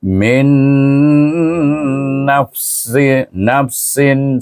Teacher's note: Terus kita baca pada yang kedua dengan dengung iaitu dengan idgham maal ghunnah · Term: idgham ma'al gunnah